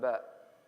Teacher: Ba comes from the lips closing together.